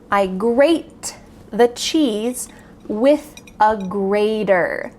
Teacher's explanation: Notice that the T in grater sounds like a D in American English. This is very common that a T between vowel sounds will sound like a D.